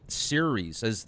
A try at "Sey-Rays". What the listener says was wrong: It's actually pronounced Sey-Rays, as if it was spelled S-E-Y-R-E-H-S, or Sey-Rays. It's not series like the World Series, it's Sey-Rays.